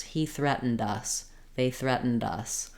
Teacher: If I'm ending with a vowel after the D, they threatened us. My D will link, and it's almost like the D will go on the word us.